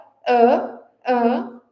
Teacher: Então, se a gente reproduzir essa vogal ã ã, a gente sente a vibração no nariz, porque tem o ar saindo ali pela cavidade nasal para produzir essa vogal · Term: vogal nasal